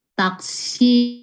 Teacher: Jadi dia long vowels, tadi dibacanya panjang ya, dua harkat.